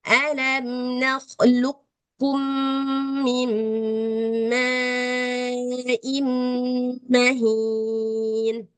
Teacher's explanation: tetap sifat daripada qof itu tebal tapi enggak perlu diqqalqalahkan · Kalau kayak gini nih, qaf ketemu ka, qafnya tebal kan? Jadi ini juga idgham naqis, dia nggak kamil ya, tetap ada suara qafnya. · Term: idgham mutaqorribain